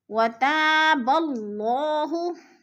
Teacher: وَتَابَ اللَّهُ، وَتا پہ جو ہے الف خالی سے پہلے تا کے اوپر زبر ہے تو الف مدہ، الف مدہ کو ہم نے 1 الف 2 حرکات کے برابر کھینچ کر پڑھنا ہے، لمبا کرنا ہے، یعنی وَتَابَ اللَّهُ، اللہ پر پڑھا جائے گا اس لیے کہ اللہ سے پہلے لفظ با کے اوپر زبر ہے تو اللہ کو پر کر کے پڑھیں گے۔